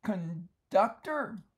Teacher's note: the N here does not change because the D is alveolar. The tongue is in the same place as the N for someone that wants to think that advanced stuff.